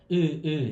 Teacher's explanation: tentar pronunciar a letra U, só que sem fazer esse biquinho para falar o U